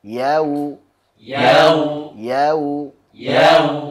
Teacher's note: Ya, sempurnakan dulu fathahnya, baru hu. Hu-nya, wawunya kita monyongkan.